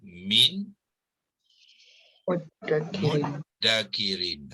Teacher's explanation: Nun dimasukkan ke dalam huruf min, makhraj dan sifatnya digugurkan, ya, dimasukkan sekali bermakna dihazafkan, melainkan sifat dengung saja. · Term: idgham ma'al ghunnah